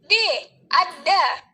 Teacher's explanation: Fonem D, cara artikulasinya juga ada di plosif atau letupan. Dan fonem D, tempat artikulasinya juga di alveolar.